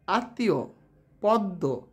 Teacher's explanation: শব্দের মধ্যে ম ফলা থাকলে সেই বর্ণ উচ্চারণে দ্বিত্ব হয় এবং সামান্য অনুনাসিক হয়